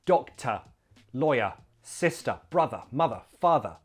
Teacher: we replace the r sound at the end with a schwa